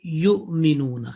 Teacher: Here you just 1 second dhamma and your voice is basically caught in between and say yu'minuna, and that is a soft jerk because of Hamza, okay? Because of Hamza, it is, it feels that there is a bit stopping in the exit point.